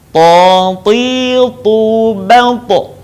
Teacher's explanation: Perbedaannya dengan huruf ta adalah huruf to tidak mengalir nafas dan huruf to diucapkan dengan suara menebal.